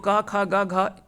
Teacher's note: ये सभी जो होता है वो कंठ से उच्चारण होता है